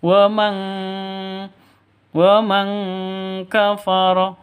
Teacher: Wa man kafara, nun mati bertemu dengan kaf, samar dengung 2 ketukan, nun matinya ditambah dengan ng, maka bacanya wa mang